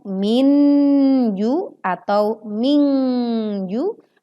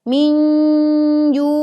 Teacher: Sempurnakan juga dengung saat nun sukun bertemu dengan huruf jim. Bunyi yang muncul bukan minju atau mingju, tetapi bunyi yang terdengar adalah minju.